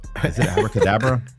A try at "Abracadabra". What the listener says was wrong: Did you just add an extra? You put another syllable in there?